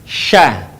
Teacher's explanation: Perhatikan, nafasnya menyebar, sya, beda dengan tadi, sa. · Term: huruf sya